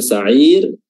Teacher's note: mad arid lis-sukun. Panjangnya 4 harokat konsisten dari awal sampai akhir